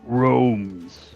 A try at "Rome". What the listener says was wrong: No S. Going too fast.